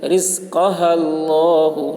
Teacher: رزقها اللہ، لام کے اوپر کھڑا زبر ہے، کھڑا زبر برابر ہوتا ہے الف مدہ کے، اس لیے کھڑا زبر کو ایک الف کے برابر کھینچ کر پڑھیں گے۔ ہا کے اوپر پیش ہے، پیش کو جلدی پڑھیں، تھوڑا بھی نہ کھینچیں، معروف پڑھیں، مجہول آواز سے بچے۔